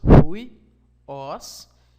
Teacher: tem a sua sílaba tônica no ômicron, na última sílaba. Seriam duas sílabas, huios, e essa sílaba, ela recebe sua sílaba tônica, você está vendo aí, portanto, seria como se fosse em português uma oxítona.